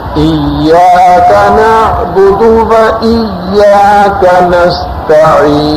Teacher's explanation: تو اس میں تشدید تو پڑھنی ہے، لیکن اس میں اتنی سختی کے ساتھ نہیں پڑھنا کہ اس میں زا کی آواز آنے لگے